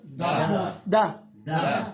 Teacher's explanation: زبان کی نوک اور اوپر کے دانتوں کے جڑ سے دا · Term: دال